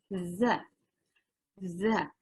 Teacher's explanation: Za dan sa itu huruf yang ringan. Berarti dia memang ujung lidah bertemu gigi atas dan gigi bawah sedikit dikeluarkan.